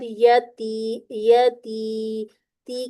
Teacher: इसके बाद यती यती ती के हम टू काउंट करेंगे और ती को बारीक रखना है